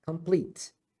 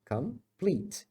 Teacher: A primeira é come, schwa, complete, porque a forte é a segunda